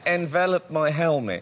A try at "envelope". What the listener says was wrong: Is that how you say it? You don't have an E on envelop. That's envelope.